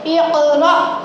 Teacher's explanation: حمزہ ساکنہ کے پڑھنے میں جھٹکا ہوتا ہے